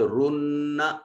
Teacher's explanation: नून मुशद्दद है, गुन्ना वाजिब होगा, आवाज को नाक में लेकर जाएं